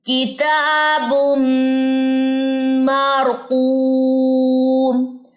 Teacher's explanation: یہاں پہ تنوین کے بعد میم ہے، ادغام ہے مع غنہ کے ساتھ. ٹھیک ہے، تو اس کو آپ نے دیکھنا ہے، یہاں پہ غنہ ہوگا، تا کو آپ نے لمبا کرنا ہے 2 سیکنڈ، مار را کو آپ نے پر پڑھنا ہے، قوم 2 سیکنڈ کیونکہ یہاں پہ واو مد ہے، میم کی دونوں پیشیں ڈراپ ہو جائیں گی، پڑھی نہیں جائیں گی.